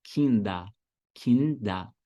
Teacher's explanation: Termina com ER, mas o final tem som de A.